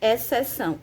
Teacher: a gente não pronuncia o som do X, né? Eles juntos, o X e o C, formam um som só, um fonema só